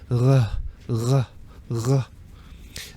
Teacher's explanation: the most common pronunciation of R is a kind of guttural R that comes from the back of your throat. It's almost pronounced in the same position where you pronounce the letter H. · This is how we pronounce R in German. So it's pronounced much further back than it is in English.